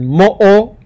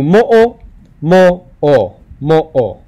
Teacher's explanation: an okina like in the word mo it's that pause in between the first o and the second o